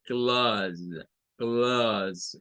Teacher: Yo le llamo como una A más grave, porque la A nuestra es bastante aguda, es A, es un sonido bastante agudo, pero este es como una A grave, es como es una A más grave, clause, clause.